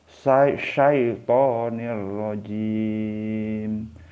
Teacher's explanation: karena ini tanwin ketemu dengan rok jadi jangan dibaca dengung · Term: idgham bilagunnah